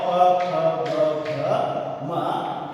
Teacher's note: प फ ब भ म ये ओष्ठ्य ध्वनियां हैं।